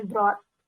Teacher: ini kalau ada GHT, GH-nya kayak nggak dianggap ya, langsung T aja. Jadi, jawabnya, bacanya brought, gitu.